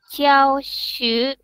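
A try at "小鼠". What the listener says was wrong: Shu-nya tolong jangan dipanjangin, banting langsung. Xiao Shu.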